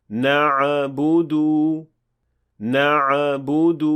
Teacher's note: آخر میں ساکن عین کے ساتھ قلقلہ کا اضافہ کرنا